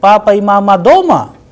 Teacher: the sound at the end is rising because I am asking a question